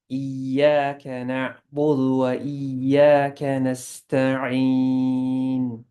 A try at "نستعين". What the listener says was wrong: Yeah, and on the scene, let the air come out. Don't stop it. نستعين. نستعين. I feel like I don't know, I can't explain with the scene, you have to let it like let the air spread.